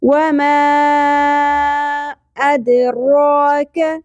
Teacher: را کے اوپر کھڑی زبر ہے اس کو ایک الف کے برابر کھینچنا ہے